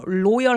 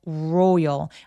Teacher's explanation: 그래서 loyal 하면 안 되고 royal. R 발음은 뒤로 혀를 당겨서 row, 앞에 우가 있는 것처럼 발음하시면 정확하게 소리 내실 수 있다.